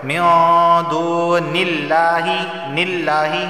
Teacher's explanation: لفظ اللہ سے پہلے زیر آیا ہے تو لفظ اللہ کو باریک پڑھا جائے گا